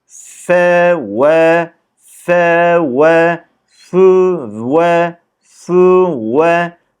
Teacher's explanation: bakın fde dudağımız geride Vav da biraz öne çıkıyor birinci de daha sıkı ikinci de daha gevşek şekilde Buna dikkat